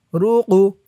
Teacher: এই কফটা কলকলার হরফ ধাক্কা দিয়ে পড়তে হবে